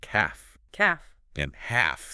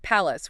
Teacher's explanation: the l sound it's gone silent